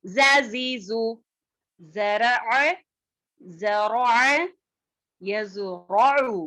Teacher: ز کی آواز باریک اور سیٹی والی ہوتی ہے